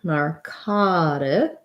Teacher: narcotics, we have second syllable stress